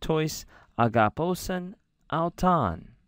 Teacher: We notice this is a question. I was trying to say that with a rising intonation